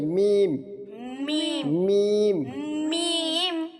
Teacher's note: দুই ঠোঁটের শুকনো অংশ থেকে মিম